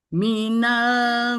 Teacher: jadi baca Nun mim bibir enggak boleh nutup ya berubah dia langsung nunnya langsung berubah jadi mim tadi gitu